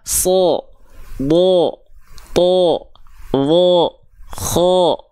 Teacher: begitu ya itu tebal Oke pokoknya yang ketika fathah vokal o ketika fathah kedengarannya bukan A tapi O dia adalah huruf yang sedang dibaca dengan keadaan yang tebal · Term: huruf yang tebal